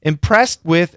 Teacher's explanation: that S is going to cancel the T. Impressed with, and kind of a stop sound actually.